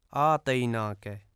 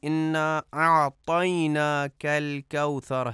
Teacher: اعطینا میں عین کو درست طریقے سے ادا نہیں کیا جاتا اور حمزہ پڑھا جاتا ہے